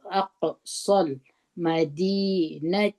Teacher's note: همزه په زور د قاف سره یو ځای کې، قاف باندې قلقله وکړي